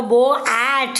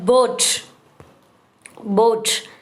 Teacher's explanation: பட் அதை நம்ம சொல்ல போ ஆட் அப்படின்னு சொல்லக்கூடாது. ரெண்டு வவலை ஜாயின் பண்ணி ஒரே வவலாக ப்ரொனவுன்ஸ் பண்ணணும்.